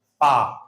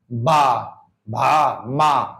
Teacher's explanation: दोनों होठ बस चिपक रहे एक दूसरे से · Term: होठ व्यंजन